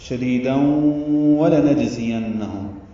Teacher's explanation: تنوین کے بعد واو آنے کی وجہ سے ادغام ہے غنہ کے ساتھ